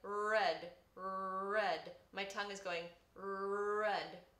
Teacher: your tongue curves up towards your hard palate. So this R just sounds a little bit harder. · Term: retroflexed R